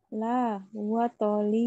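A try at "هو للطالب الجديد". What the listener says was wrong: Bukan alif lam. Ini bukan alif lam. Ini harfu jar li. Huwa lit talibil jadidi.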